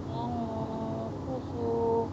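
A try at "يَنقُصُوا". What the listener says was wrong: এই শেষে বারে টানছেন কেন, শেষে টান নেই তো, ইয়াকুসু, না না নুন স্পষ্ট করে হবে, স্পষ্ট হবে না তো, ইয়া ইয়া ইয়াকুসু, নাক দিয়ে পড়েন, এটাকে নাক দিয়ে পড়া বলি আমরা বাংলাতে।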